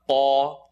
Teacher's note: Lam is light, La. Qaf is heavy behind the uvula